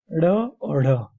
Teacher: दो उत्क्षिप्त व्यंजन भी माने जाते हैं, जो जिह्वा का ऊपर छूकर नीचे ये गिरते हैं